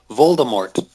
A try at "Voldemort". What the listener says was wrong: Yeah, it's wrong. You don't pronounce the T. It's just Voldemort.